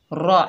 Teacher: रा के ऊपर ज़बर, बगैर खींचे पढ़ेंगे और रा को पुर पढ़ेंगे